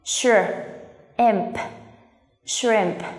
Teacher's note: Cái khó nhất là để làm tổ hợp âm sh. Gần như các bạn làm âm sh và âm r cong lưỡi về phía sau cùng một lúc. Hai âm này gần như diễn ra cùng một lúc nên là nó không phải là sure mà nó là sure.